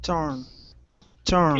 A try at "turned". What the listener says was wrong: Give me a D at the very end. Turned.